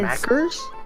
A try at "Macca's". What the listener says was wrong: Macca's. it's an A. Macca's, not Mackers.